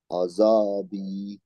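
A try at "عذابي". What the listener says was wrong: না, আজা না, না দও না, এটা হেভি লেটার না, লাইট লেটার। আদা বি, বি এর সাথে একটা ইয়া আছে, এই জন্য টান হবে।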